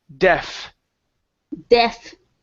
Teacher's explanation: Instead of diff, it's deh, opening the mouth more. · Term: short e